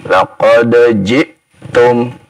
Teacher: hamzah itu dari pangkal tenggorokan